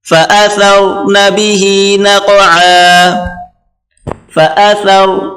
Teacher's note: ہلکی سی زبان باہر نکالیں اور را سے ملا کر پڑھیں۔ فأثر، را کو موٹا کریں۔